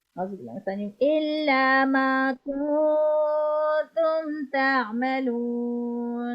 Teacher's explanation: Whenever you are doing ikhfa, keep in mind you have to stretch for 2 seconds. You have to take the voice in the nose and vibrate the voice in your nose for 2 seconds. If you are stretching less than 2 seconds, that means you are not fulfilling the exact requirement.